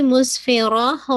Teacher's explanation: سین میں آپ کو پتہ ہے ہمس بھی ہے، خود آپ کو فیل ہوگا وسلنگ بھی آ رہی ہے اور ایئر بھی بلو ہو رہی ہے